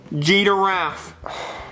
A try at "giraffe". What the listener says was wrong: No, it's not G-giraffe, it's giraffe. There's no D, where's the D? Show me the D. Where's the D? It's giraffe. No, it's giraffe. Stop saying G-giraffe, it's giraffe.